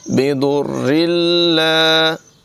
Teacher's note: दाद की आवाज़ पुर होगी, रा जो है इसकी आवाज़ बारीक है